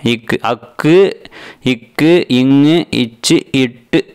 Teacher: இதெல்லாம் அரை மாத்திரை அளவுதான் ஒளிக்கும் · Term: ஒற்றெழுத்து